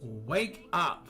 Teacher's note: The K and wake link smoothly with the U and up, making it sound like wake up.